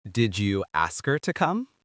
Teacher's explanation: The H is silent, so the words glue together. This makes the sentence sound faster, but really it is just smoother.